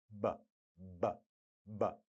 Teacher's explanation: B, b, b is the voiced bilabial plosive.